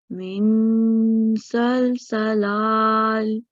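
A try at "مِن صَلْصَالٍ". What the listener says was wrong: Okay, this will be min salsalin. Because remember this is sod, right? So make sure you are making a difference between seen and sod sound. This will be more rounded.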